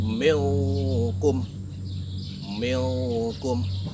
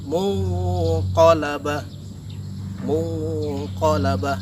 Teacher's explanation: Huruf yang terdapat pada tingkatan abad ini ada 2, yaitu qaf dan kaf. Nah, cara membacanya adalah dengan menyamarkan huruf N itu menjadi huruf NG atau eng. Jadi tersamarkan menjadi bentuk NG.